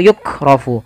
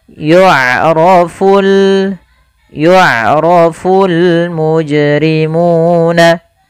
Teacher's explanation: Pada lafal bacaan yu'rafu, di sini ain memiliki sifat yaitu sifat bainiyah, yaitu suaranya tidak terlalu dialirkan dan tidak pula terlalu ditahan. Maka tapi hati-hati jangan dibaca dengan yu'rafu atau yukrafu.